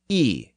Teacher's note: it was basically the e sound pronounced with rounded lips